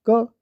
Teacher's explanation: तो क बिना छोटे आ के उच्चारण नहीं होगा जैसे क क के बाद तुरंत अ की ध्वनि आ रही है